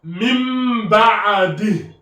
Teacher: on rajoute le mim ici pour remplacer le noun sakina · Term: qalb